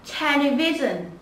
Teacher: Television sẽ hạ giọng xuống